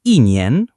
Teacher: Before first, second, or third tone words, becomes fourth tone, like 一 年, 1 year, or 一 天, 1 day.